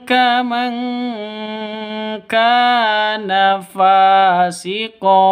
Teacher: ka panjang dua ketukan karena ada alif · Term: mad thabi'i